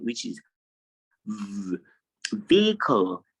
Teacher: it is a long E sound that you have immediately after the V sound